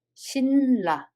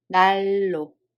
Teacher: First, the letters have 니은 and 리을 받침, and they are followed by 리을 and 니은. Therefore, to make easier pronunciation, 니은 assimilates to 리을. So first one, we don't read it as 신라, but we read it as 실라.